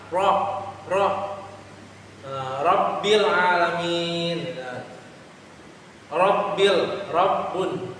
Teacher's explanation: Nah lam itu hampir tebal ya, tapi huruf ro menyimpang ke makhrajnya lam ya, saat mengucapkan huruf tip. Lalu huruf ro juga memiliki sifat takrir, yang mana getaran yang berulang